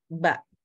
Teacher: bibir bawah yang bergerak sama seperti bunyi B Ba Itu bibir atas dengan bibir bawah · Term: bilabial